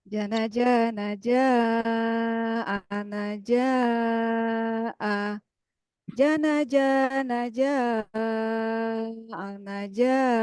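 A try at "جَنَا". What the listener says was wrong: Oke, mantap, bagus.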